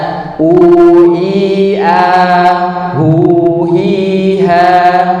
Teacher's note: Jadi rongganya ke rongga mulut tidak sempurna ini kalau kita bermasalah kalau larinya ke hidung maka fathahnya harus dibuka tadi. Kasrahnya tarik domah dimoyongkan